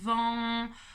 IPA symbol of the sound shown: ɑ̃